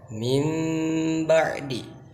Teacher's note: nun itu dibalikan cara penyebutannya kepada huruf ba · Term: iqlab